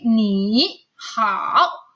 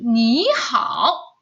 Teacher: dua suku kata yang memiliki nada ketiga, maka ketika kita baca, ini baca ya anak-anak, bukan kita tulis, baca, maka di sini akan menjadi nada kedua.